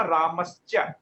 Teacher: जो विसर्ग बदला है आपका, वो तालव्य शकार के रूप में बदल गया है